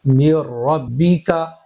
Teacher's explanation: यह जो नून है फुल साइलेंट हो चुका है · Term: इगामे बिला गुन्ना